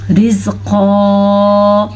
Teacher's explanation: را باریکی سے پڑھی جائے گی کیونکہ را کے نیچے زیر ہے